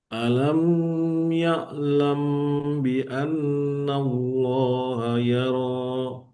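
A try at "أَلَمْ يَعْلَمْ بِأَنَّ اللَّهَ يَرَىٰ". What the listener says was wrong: Yang pertama tidak kita panjangkan. Alam ya'lam. Yang mim mas ke ya langsung saja. Alam ya'lam.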